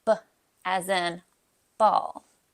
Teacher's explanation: to make the letter B sound you press the lips together then release the builtup air